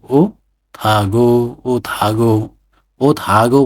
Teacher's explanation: थ भयो, स थको रूपमा उच्चारण हुने भयो, अनि ह मौन भयो